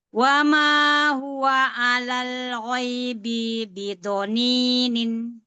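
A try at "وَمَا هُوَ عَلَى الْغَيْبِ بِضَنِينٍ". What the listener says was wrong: Bi yang pertama pendek, nggak panjang.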